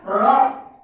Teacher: Roh satu ketuk kosor. Roh kosor artinya pendek bacanya, tidak boleh melebihi dari satu ketuk atau satu harakat.